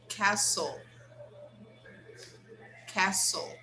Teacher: Remember, we don't pronounce the T. The T is silent.